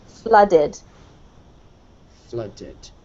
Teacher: make it more of an uh sound as if it was spelled with a u